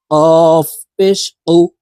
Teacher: কাফ হরফের উচ্চারণ জিহ্বার গোড়া থেকে একটু আগে বাড়াইয়া তার বরাবর উপরের তালুর সঙ্গে লাগাইয়া উচ্চারণ করতে হবে